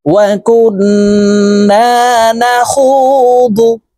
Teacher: তাসদীদওয়ালা নুনের সাথে নাকের বাসি থেকে গুন্নাহ করে পড়ব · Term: ওয়াজিব গুন্নাহ